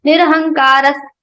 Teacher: Nirahankara Visarga is followed by sa. So we are changing the sound of Visarga into sa.